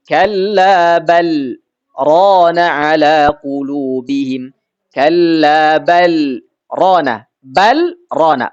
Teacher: Balnya menjadi jelas lamnya. Kenapa? Karena ada saktah. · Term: izhar